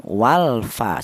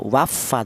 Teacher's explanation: Sementara untuk al ya yang masuk pada ini ee apa ee izhar qamariah artinya izhar itu jelas. Jadi lamnya mati ini dibaca jelas atau kelihatan